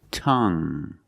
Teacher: you have only the nasal sound there's no G